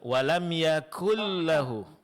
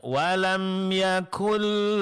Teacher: pengucapan huruf kaf di sini tipis ya